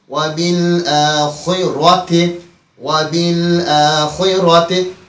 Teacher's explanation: Bazen ve bil ahireti diye r'ni burada ince okuyurlar ki bu yanlıştır. Bizim qiraətdə buradaki ra tabii ki qalın okunacak.